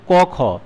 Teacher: अघोष व्यंजन में जो है स्वर तंत्रियों में कंपन नहीं होता है।